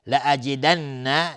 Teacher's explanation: نون مشدد دو حرکت غنه میدیم